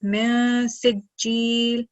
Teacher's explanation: Noon Sakin followed by Ikhfa letter Sin. So we're going to produce the nasal sound and prolong it for 2 seconds